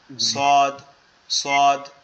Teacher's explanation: সোয়াদের উচ্চারণটা হচ্ছে আমাদের জিহ্বার আগা সামনের নিচের দুই দাঁতের আগার সাথে।